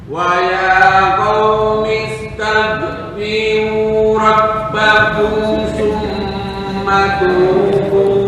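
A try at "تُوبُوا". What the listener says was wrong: Masih kepanjangan tubu. Tenggorokan bagian atas, saya nggak tahu nih ujung apa pangkal. Yang penting tenggorokan bagian atas.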